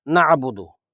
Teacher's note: عین ہے جو کہ حلق کے درمیانی حصے سے نکلنا چاہیے، نعبدو پڑھ کر حمزہ نہ بنایا جائے، نعبدو۔